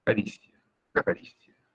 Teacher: si te preguntas cuál es la sílaba tónica, es ri, cari, pero lo dices suave, ¿no?